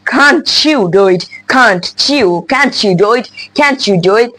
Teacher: the T and the Y they just combine together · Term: the sound CH